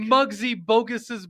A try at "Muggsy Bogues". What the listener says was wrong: It's not bogus. It's Muggsy Bogues.